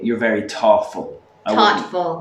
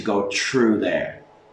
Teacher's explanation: We either say duh instead of TH or tuh.